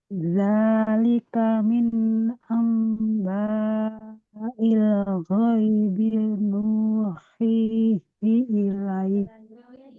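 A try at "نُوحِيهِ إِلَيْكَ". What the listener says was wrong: Lebih panjang Ibu. Nuhihi ilaik. Ini matlin ya namanya. Zalika min amba'il ghaibi nuhihi ilaik.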